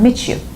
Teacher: Whenever you have two words, the last letter is T, and here Y is the first letter of the next word. So whenever you want to just like read it, you produce ch sound